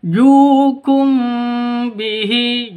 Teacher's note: Liu bihi hajuk ada layar bertemu dengan tasdid wajib enam lima ketukan ya atau enam ketukan. Jukum bihi ju panjang dua ketukan karena ada wau mati diawali dengan domah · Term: mad asli